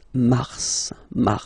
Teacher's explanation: pronounce the final s